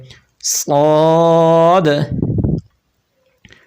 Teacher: ز اور سین دونوں کو تیزی کے ساتھ پڑھیں گے اور باریک پڑھیں گے، اور صاد کو سیٹی کے ساتھ بھی پڑھیں گے اور اس کو پر بھی پڑھیں گے، یعنی موٹا کر کے بھی پڑھیں گے۔